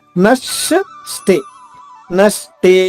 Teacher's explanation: న పైన ఆఘాత తీసుకుంటూ స్టే లోని ష ద్విత్వం చేసుకుంటూ అంటే రెండు షాలు చేసుకుంటూ